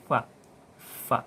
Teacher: perut bibir bawah, ya, bertemu dengan ujung 2 gigi atas. keluar darinya huruf fa.